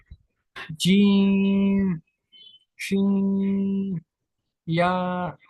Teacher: दूसरी कोई जगह पे हमको ये अदा नहीं करना है, इस बात का बिल्कुल ध्यान रखना है, जरा सा भी आगे पीछे नहीं करना है। जबान का बीच और तालू का बीच वाले हिस्से से ही अदा होना चाहिए।